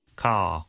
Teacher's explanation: in car the vowel sound is lengthened in place of the r sound